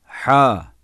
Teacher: boğazın ortasından ve boğaz hafif sıkılarak çıkarılır ince gizli ve yumuşak okunur